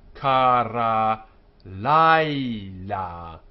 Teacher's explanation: you can't have an accented syllable right up against another accented syllable, and so here the accent is pushed back to before. Kara laila.